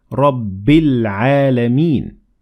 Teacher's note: But we ignored the following Hamzat Wasl because we kept on reading and we said Rabbil Alameen. So here we connected the ba directly to lam and we said Rabbil Alameen. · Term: moon al